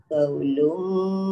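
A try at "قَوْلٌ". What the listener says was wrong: Tebal sikit qaf dia. Qawlum.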